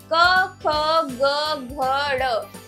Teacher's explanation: क ख ग घ ड यह है क वर्ग कंठ से।